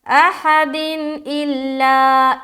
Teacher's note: सिर्फ नून की आवाज़ को जाहिर करना है, देर बिल्कुल नहीं लगाना